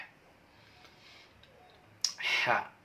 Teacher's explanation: Selanjutnya adalah huruf ha. Huruf ha dilafalkan yaitu dari tengah tenggorokan.